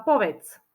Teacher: na konci je počuteľné C